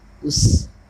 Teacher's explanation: حمزہ سین زبر اس، جیسے کہ آپ کو پہلے بھی معلوم کہ یہ حروف صفیریہ میں سے ہے اور سیٹی جیسی تیز آواز نکلتی ہے اس کی، تو اس کو آئیے ادا کرتے ہیں۔